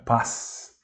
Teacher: a letra Z perde a sua sonoridade e soa mais surda